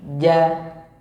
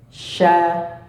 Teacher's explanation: Kalau jim lidah depannya apa? Agak lurus. Kalau shin itu ke bawah, ya. Dan dia juga datar.